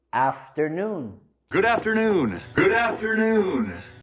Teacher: queremos subir la entonación en la primera sílaba de afternoon